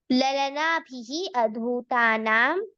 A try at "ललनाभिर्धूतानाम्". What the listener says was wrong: अधूतानाम् इति नास्ति, ललनाभिः धूतानाम्। अ इति नास्ति।